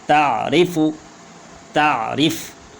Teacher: را موٹی نہیں ہوگی کیونکہ اس پہ زیر ہے، جس کے اوپر جس حرف پہ زیر آ جائے، نیچے زیر آ جائے جس حرف کا، مطلب را کے نیچے زیر آ جائے تو یہ را موٹی نہیں ہوگی، باریک ہوگی۔